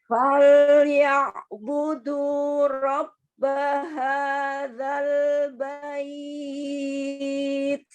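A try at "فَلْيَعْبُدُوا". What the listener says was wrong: Fa jangan ditebalkan fol, enggak, tapi fal ya budu. Jangan fo walaupun dia fathah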